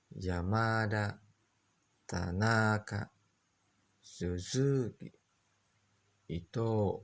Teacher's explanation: dari awal mulai naik datar